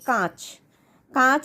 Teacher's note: তখনই কিন্তু এটা শুধুমাত্র মুখ গহব্বর দিয়ে শ্বাসবায়ু নিশ্রিত হচ্ছে না তখন মুখ এবং নাক উভয় দিয়েই শ্বাসবায়ু নির্গত হচ্ছে সেজন্য এটা হলো অনুনাসিক স্বরধ্বনি